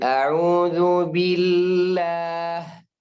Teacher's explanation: Kalau ada lafzul jalalah dan sebelumnya harakat kasrah langsung dibaca tipis.